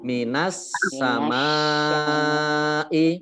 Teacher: Ini alif lamnya tidak dibaca. Ini disebut alif lam samsiyah ya. Langsung masuk ke sin. Ini ada tasjidnya.